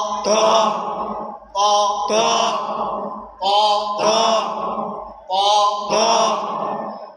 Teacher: জিহ্বার আগা সামনের উপরে দুই দাঁতের গোড়ার সঙ্গে লাগায়।